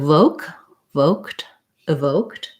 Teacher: So here's another place where I would start with the voke syllable, and the O says, it's a diphthong in American English, says O, hold it a little longer. The ED in evoked says the T sound because the K is voiceless, so the ED just says T rather than a D sound.